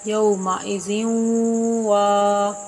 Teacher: یا اور واو یہ دونوں حروف یرملون میں سے ہیں، حروف ادغام میں سے ہیں۔ با کا ادغام یا میں ہو رہا ہے، اگلے لفظ میں ذال کا ادغام واو میں ہو رہا ہے